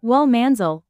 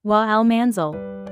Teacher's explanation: the wa precedes it, making the Hamzatul Wasl silent. It's pronounced wal manzil, not wa al-manzil.